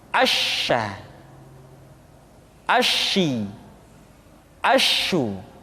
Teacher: Dan sifat yang dimiliki oleh huruf sya yang paling nampak adalah apa yang disebut dengan sifat at-tafashi, yaitu menyebarnya angin di dalam mulut kita